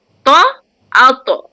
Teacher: Jadi to tu tebal dan ada sifat qalqalah juga.